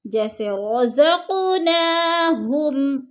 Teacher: ہم پہ جو ہے ادھر ہم نے غنہ نہیں کرنا، اظہار ہو رہا ہے · رزق قاف پہ قلقلہ ہے، تھوڑا سا ہلا کر ہم نے پڑھنا ہے اس کو۔